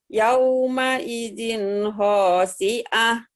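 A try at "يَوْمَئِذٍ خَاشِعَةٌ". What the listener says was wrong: Cuman kho-nya nggak keluar ya. Yauma idin khasyin-nya nggak keluar. Khasyiah. Khasyiah. kayak ngorok, Bu. Kho, khasyiah.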